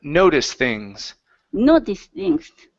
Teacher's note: So, instead of noticed things, okay, connect the T to the th. So, it's noticed things.